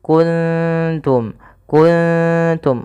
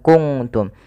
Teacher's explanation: kalau di sini ketemu ta maka samarkan ikfanya atau nunnya samarkan ke ta kuntum kuntum Bukan kunungtum tapi kuntum wallahu mukhrijum Ma kuntum taktumun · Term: Ikhfa